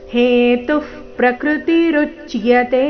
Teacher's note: ಋ ಮೇಲೆ ಆಘಾತ ಮುಂದೆ ಅರ್ಧ ಚ ಪೂರ್ತಿ ಯ ಸೇರಿ ಸಂಯುಕ್ತ ಅಕ್ಷರ